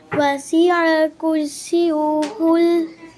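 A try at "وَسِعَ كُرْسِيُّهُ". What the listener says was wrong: कुर्सियु नहीं है बेटे, सीयू नहीं है। सीयू कहेंगे तो यहाँ पर शद अदा नहीं होगी। शद को अदा करने के लिए सीन को या के साथ सख्ती से मिलाएं एकदम। सीयू सीयू कुर्सियु। वसिअ कुर्सियुहुस समावाति वल अर्द।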